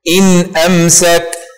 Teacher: نلفظ النون الساكنة بدون غنة زائدة، إن أمسك، ونحقق حركة الحرف الذي قبل النون دون زيادة أو نقصان، وكذلك حركة الحرف الذي بعدها. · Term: الإظهار الحلقي